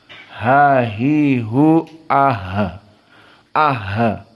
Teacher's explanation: Maka jangan kalian telan Hnya tapi dikeluarkan karena ha termasuk dari huruf hams jaroyan annafs ha hi hu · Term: ha asakinah